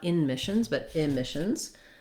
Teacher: we're stressing on the mish syllable. That first syllable is an I sound.